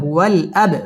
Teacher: বা কলকলার হরফ ধাক্কা দিয়ে পড়তে হবে